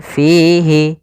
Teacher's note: Kemudian fihi, di sini ada mad tabi'i, yaitu adanya kasrah bertemu ya sukun, panjangnya 2 harokat.